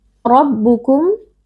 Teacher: ro huruf tafkhim dibaca dengan mengangkat pangkal lidah karena RO di sini berharakat fathah